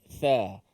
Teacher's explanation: Walaupun dua-duanya hamas, tetapi tha mesti diletakkan di bawah gigi kacip. Tha. Adapun sin, hujung lidah tak keluar, tapi dia lebih kepada menekan di belakang gigi bawah itu.